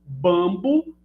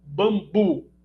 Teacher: Perceba, então, que é a mesma sequência fonológica, só que a primeira é paroxítona, a segunda é oxítona.